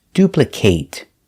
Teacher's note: if it's a verb we pronounce it with a long a